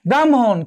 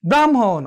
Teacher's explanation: প্রত্যেকটি ক্ষেত্রেই পরের যে ধ্বনিটি রয়েছে, পরের ধ্বনিটি আগে উচ্চারিত হবে এবং আগের ধ্বনিটি পরে উচ্চারিত হবে। যেমন দেখো আমরা বলছি ব্রাহ্মণ, কি বলছি, ব্রাহ্মণ।